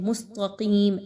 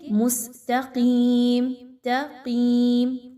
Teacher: ता को बारीक रखेंगे और क़ाफ को मोटा पढ़ेंगे। अब यहाँ पे क़ाफ को मोटा करने के चक्कर में ता भी मोटी हो जाती है।